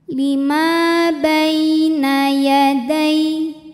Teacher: ada Ya Sukun didahului harakat fathah maka dibacanya lembut atau lunak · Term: harfulfulin